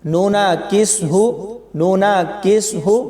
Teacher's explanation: नून को काफ के साथ मिलाते हुए शद नहीं पढ़ी जाती